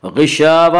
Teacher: غشاوہ اور یہاں پہ الف مدہ ہے، الف مدہ الف ہمیشہ مدہ ہو تو اس سے پہلے زبر ہوتا ہے، اس لیے الف مدہ کو ایک الف کے برابر کھینچ کر پڑھیں گے